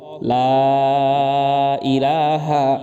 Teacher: লা এখানে তিন আলিফ টান